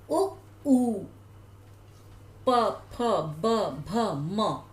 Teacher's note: अब उ ऊ प फ ब भ म, ये जो भी वर्ण बोले जा रहे हैं, स्वर या व्यंजन, इनको बोलते समय होठों से उच्चारण हो रहा है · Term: ओष्ठ वर्ण